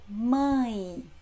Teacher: a letrinha E foneticamente tem som de I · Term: semivogais